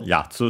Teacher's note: Accented on the first syllable yatsu